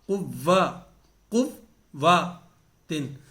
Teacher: لیکن جو واو ہے یہ حرف مشدد ہے، یہ 2 بار پڑھی جا رہی ہے. ایک بار قاف کے ساتھ، اس سے پہلا جو حرف ہے اس کے ساتھ اب اس کی آواز آئے گی قو، قو، قو، اور پھر دوسری بار وا، قو، وا، قو، وا، تن.